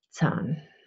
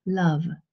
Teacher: it's a little bit more open it's a little bit longer than English love